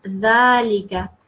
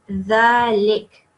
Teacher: It's a sukoon. So dhalika, when you make a pause, turns into dhalik.